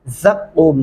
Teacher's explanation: ज़ा सख्ती से अदा करेंगे, क़ाफ गले से अदा करते हुए लंबा करेंगे और मीम को साइलेंट करके वक़फ़ कर देंगे